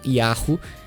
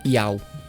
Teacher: Então quando ela está no meio ou no fim de uma palavra rápida, os falantes nativos tendem a omitir o som aspirado. Assim o sufixo Yahu acaba soando foneticamente como um ditongo clássico, Yau. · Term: supressão